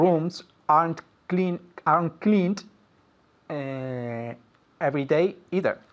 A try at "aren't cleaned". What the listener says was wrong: And aren't cleaned with a D sound, not a T sound. Aren't cleaned.